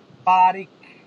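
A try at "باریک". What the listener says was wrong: উনি বারিক না বলে বলছে বারেক বলছে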